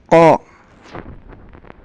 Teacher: pangkal lidah naik ke arah langit-langit mulut. Pangkal lidah ditempelkan ke ujung tenggorokan. Tekanannya kuat. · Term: Huruf qaf